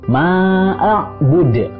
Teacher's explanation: Dan yang terakhir adalah bud, dalnya adalah qalqalah. Karena di akhir namanya adalah qalqalah kubro, jadi harus dipantulkan.